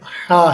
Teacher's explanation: حا حلق یعنی گلے کے درمیان سے نکلتا ہے